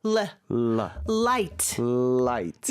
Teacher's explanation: 그 발음을 할 때는 윗니 위에다가 혀를 댔다가 네. 떼면서 내는 L 소리거든요. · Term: 밝은 L 사운드